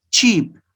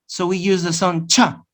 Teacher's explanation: The other one is very special because it's the combination of two sounds, the sound ta and the sound sh